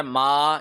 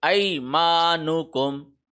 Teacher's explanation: تو یہ ہوگا ای مانکم، میم کے اوپر کھڑی زبر ہے، ما، اس کو 1 سیکنڈ لمبا کریں گے